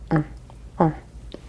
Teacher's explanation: I'm kind of using the back of my tongue to almost stopper up the cavity of my throat back there to create that sort of nasal sound.